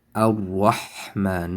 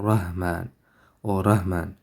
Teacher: Ha is in the middle of the throat, so it will be Ar-Rahman, not Rahman or Rahman.